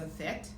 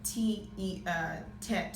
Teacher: Okay, so the next one is Tet, and it actually has a TH sound in the early Hebrew, so Thet, and the modern sound is a Tet, so a T sound